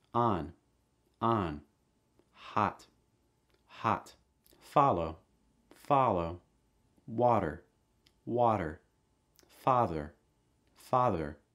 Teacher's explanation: ah sound mouth wide front of your tongue down back your tongue down